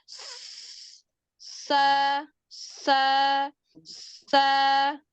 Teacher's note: kalau Sin ini tidak nempel nah dia keluarnya itu ee seperti desisan